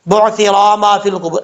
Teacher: اکثر لوگ غلطی یہاں پہ یہ کرتے ہیں، را کو لمبا کر دیتے ہیں